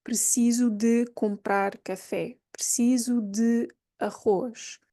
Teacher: We hardly pronounce that de. It's very, very subtle, but it has to be there.